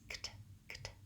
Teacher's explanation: And if I find that kt difficult, you can just say those two sounds, kt, kt. So the back of my tongue lifts for the K, k, the front lifts for the T, t, k, t, kt.